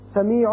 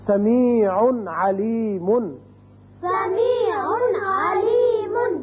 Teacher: تنوین جو نون اظہار ہوتا ہے یہاں تو اچھی طرح اظہار کریں گے ہم، سمیع نہیں کرنا، یا سمیع یہ بھی آواز غلط ہے.